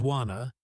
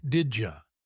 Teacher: Some sounds are dropped or changed. For example, going to becomes gonna, want to becomes wanna, and did you sounds like didja. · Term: reduced sounds